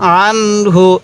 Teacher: এই নুন সাকিনের পরে হাটি হলো ইজহারে হরফ তাই এই নুন সাকিনটি আমি স্পষ্ট করে পড়ছি